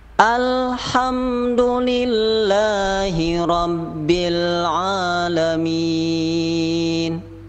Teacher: Kebanyakan kita selama ini membaca al, itu berarti kurang tepat, karena berarti kita menjadikan lam itu qalqalah, al. Yang benar adalah lam itu hanya ditahan saja.